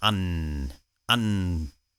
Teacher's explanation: in west perthshire there was this form which elongates the n sound